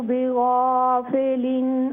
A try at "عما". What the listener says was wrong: عما نہیں عین عما وما اللہ بغافل عما تعملون. کوشش کیجئے یہ عین جو ہے نا اس کو کلیئر کریں.